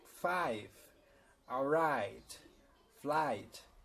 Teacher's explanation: O som da letra I é um som mais com A e o I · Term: I sound